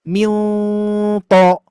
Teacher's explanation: Makanya di sini harus ditebalkan karena huruf to itu mengangkat pangkal lidah.